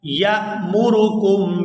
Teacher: یا کو حمزہ ساکن کے ساتھ ملائیں گے تو جھٹکے کے ساتھ ادا کریں گے